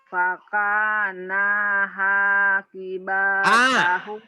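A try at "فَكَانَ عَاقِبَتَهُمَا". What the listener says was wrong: Bukan ha. Ain. Yang panjangnya ka sama a sama ma.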